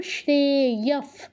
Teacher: তারপর শ্রেয়ফ, শ্রেতে দীর্ঘ ইয়, দ্রুত বলে বিসর্গর জায়গায় ফয় হসন্ত যেহেতু পরে প আছে